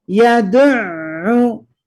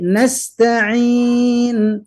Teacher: ada ain di sana yang harus keluar dari tengah tenggorokan. Nasta'in, ketika vokal i nasta'in, tidak ta'i tapi ta'in, nasta'in ya.